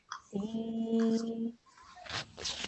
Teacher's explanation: It's a ya sakin, but because the letter before has a kasra underneath, it becomes a ya mad. And then we need to elongate this sound for 2 seconds